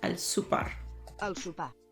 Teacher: the o sound like you so it's El Super Al super and you don't say the r